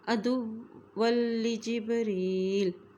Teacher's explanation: دال کی پیش کو واو کے ساتھ ملائیں گے کیونکہ واو کے اوپر شد ہے